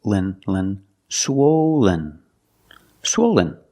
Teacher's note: use the long o like no and go swo swen swollen the second syllable is not stressed